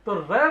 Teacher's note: र बोलते समय जीभ का जो है वो फोल्ड हो जाती है, पीछे की तरफ मुड़ती है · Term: लुंठित